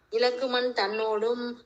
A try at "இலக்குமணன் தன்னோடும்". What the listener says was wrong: இலக்குமணன் எழுத்தெல்லாம் விடக்கூடாது, அதுக்குதான் சந்தை பார்த்து செய்வீங்க. இலக்குமணன் தன்னோடும்.